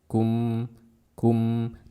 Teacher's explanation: Nah, teman-teman perhatikan di akhir bacaan ini kalau kita waqaf di situ ada mim mati. Karena mim bersifat bainiyah, jadi alirkan suaranya sedikit. Kum, kum, dan suara yang mengalir itu disebut dengan gunnah.